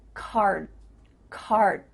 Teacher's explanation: you're not actually making a D sound but your mouth is making that shape card card my tongue is flat against the roof of my